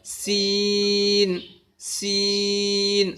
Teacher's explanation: سیٹی کے ساتھ پتلی آواز میں، باریک آواز میں سیٹی کے ساتھ اس کی آواز نکلے گی۔